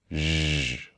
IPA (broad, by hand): ʒ